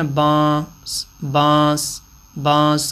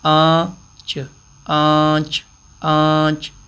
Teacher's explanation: تو یہ عام الفاظ ہیں جن کو ہم بولتے ہیں تو آواز ناک میں جاتی ہے، اور یہی اخفاء والی آواز ہوتی ہے۔ جیسے تیسرا حرف یہ لکھا ہوا ہے آنچ، آنچ آنچ آنچ، تو یہی اخفاء ہے۔